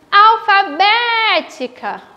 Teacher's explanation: Na palavra alfabética, alfabética, o som também é aberto, então eu sei que vou usar o acento agudo.